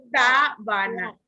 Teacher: Lleva el acento en sa.